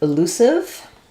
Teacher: in elusive we have the stress on our L syllable and here letter U says the o sound